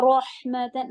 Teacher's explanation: رو heavy ہوگا زبر کے ساتھ